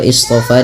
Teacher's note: shad itu pangkal lidahnya terangkat dengan memiliki sifat yang namanya sifat isti'la. Ya, isti'la, dan dia juga itbaq.